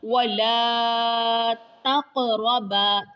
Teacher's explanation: قاف کے اوپر قلقلہ، را موٹا